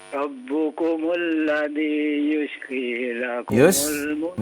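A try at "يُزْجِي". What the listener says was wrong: Bukan yuz, tapi yuz kezai ya. Yuz ji.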